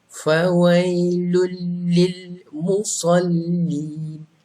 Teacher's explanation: idgham bilal ghunnah ini maksudnya bila kamu baca tanwin bertemu dengan lam tiada dengung